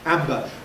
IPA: ˈæmbə